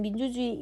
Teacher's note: 의 같은 경우는 우리가 표준 발음법을 공부하다 보면 이로 발음되는 경우도 허용하는 경우가 있어요. 의 같은 민주주의 라는 얘기를 하면은 이 같은 경우는 이 이렇게 발음을 하기도 하거든요.